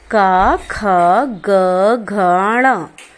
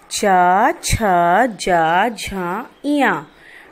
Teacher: वर्णों में का से मां तक के व्यंजन स्पर्श व्यंजन कहलाते हैं। इन व्यंजनों का उच्चारण करते समय मुख के कोई 2 अंग अलग अलग स्थानों का स्पर्श करते हैं, इसीलिए इन्हें स्पर्श व्यंजन कहते हैं।